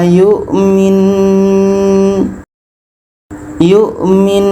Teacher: Nah, untuk yang kedua ini, nun tasdid ini hukumnya wajibul ghunah. Jadi sebelum berhenti kita dengungkan dulu. Kita dengungkan dulu dua harakat baru matikan nun.